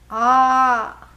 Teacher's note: The first level of elongation with 2 matras, it is just the A with an attitude.